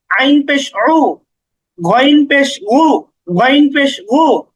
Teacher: আইন একটু গলার মাঝখানে নিতে হবে